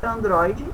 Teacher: o mais forte é o DRO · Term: sílaba forte